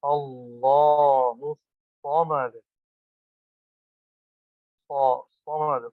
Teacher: لفظ اللہ کا لام موٹا ہوگا اور الصمد صاد موٹا.